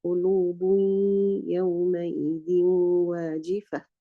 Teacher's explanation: The noon has merged into the ya, but you can still hear the sound of the gunna of the noon. So again, this merging is not complete. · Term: idgham naqis